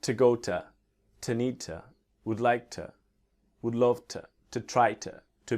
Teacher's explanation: to before a consonant when we speak quickly can be t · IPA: tə